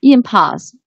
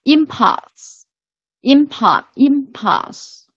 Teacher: this stress should be on the first syllable. Yeah, impulse, because it works as a noun in the context.